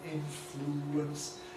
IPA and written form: ˡɪnfluːəns (influence)